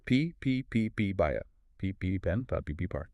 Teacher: my throat is completely still. There's zero vibration. · The letter P is a voiceless bilabial plosive. Your vocal cords do not engage at all. They just remain completely open and relaxed.